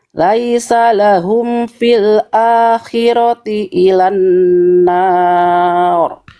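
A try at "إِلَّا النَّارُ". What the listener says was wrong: Lamnya hati-hati ada tasydid bunda.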